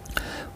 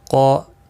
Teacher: قا الف مدہ ہے، ایک الف کی مقدار کے برابر کھینچ کر پڑھیں گے. قاف الف اور قاف تینوں پر پڑے جائیں گے.